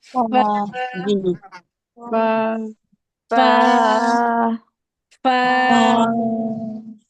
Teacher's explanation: ऊपर वाले दो दांतों का सिरा नीचे के होंठ के अंदरूनी हिस्से से जब लगता है तो फा अदा होता है, यानी फा पढ़ते वक्त आपकी ये जो दांत है ना इसका जो नीचे का हिस्सा है वो नीचे वाले होंठ के अंदर वाले हिस्से में लगना चाहिए।